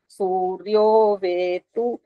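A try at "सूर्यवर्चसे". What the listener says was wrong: आपने दो मंत्रों में ऐ की आवाज दी है। तीसरे मंत्र में आपने ठीक किया है। सूर्य वर्च ऐसे नहीं बोलना होता।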